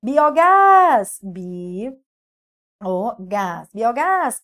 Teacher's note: oxítona sílaba tônica é a última terminada em a seguida de S